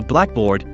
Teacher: I would call it a black board placing primary stress on board